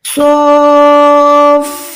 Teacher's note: صاد کھڑی زبر سو، اس کے اوپر یہ جو ہے بڑی مد ہے، اس کو آپ نے کم سے کم 4 سے 5 سیکنڈ لمبا کرنا ہے۔ صرف لمبا نہیں کرنا بلکہ فا کے ساتھ ملانا ہے۔ ہم اس کو سو فا ایسے نہیں پڑھ سکتے، اگر ہم نے ایسے پڑھا تو فا الگ ہو جائے گا، صاد الگ ہو جائے گا۔